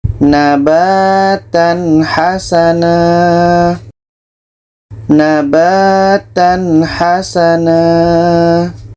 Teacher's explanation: Tanwin jelas, ha jelas dan tidak ada dengung. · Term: izhar halqi, izhar halki